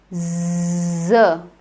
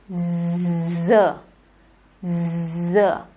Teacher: Z. Now Z, notice it is voiced, it is alveolar, and there is a very narrow opening. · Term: fricative